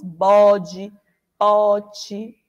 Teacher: A gente não usa o E com o som do E aberto, não.